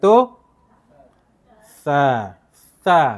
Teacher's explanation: Bila sebut sa, hujung lidah mesti keluar. Kalau lidah tak keluar, dia jadi sin.